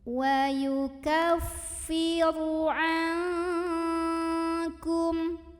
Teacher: Maka cara membaca nun sukunnya ini adalah dibunyikan samar-samar menuju huruf kaf sambil dengung. Nah, untuk huruf kaf karena makhrajnya jauh dari huruf nun, yaitu di pangkal lidah ya, maka bunyi dengungnya, bunyi angnya lebih besar dibandingkan dengan kesamarannya. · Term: ikhfa ab'ad